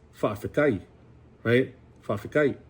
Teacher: when you use the Samoan language, you can change the T's to K's